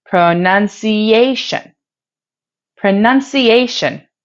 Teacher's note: The primary stress falls on the 4th syllable, ah, because it is pronounced more loudly and with a higher pitch compared to the other syllables.